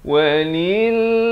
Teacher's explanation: Walillah. Lafz jalalah ini dibacakan dengan nipis 2 harakat. Jangan baca tebal.